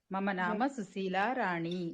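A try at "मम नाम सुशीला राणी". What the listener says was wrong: రాణి కూడా దీర్ఘం వెళ్ళాలండి.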